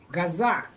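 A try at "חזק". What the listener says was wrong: So this is a chet, so it's chaza.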